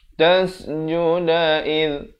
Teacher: Di hujung lidah ini, hujung lidah. Id, dia keluar di antara dua gigi, menyentuh dua gigi di atas. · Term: zal